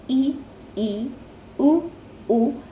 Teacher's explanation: इनको बोलने में मुंह को हमें काफी कम खोलना पड़ता है, इसलिए ये स्वर कहलाते हैं संवृत स्वर।